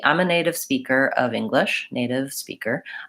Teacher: I still use voicing on native I'm not really lingering on that be native speaker I'm moving right from the to this native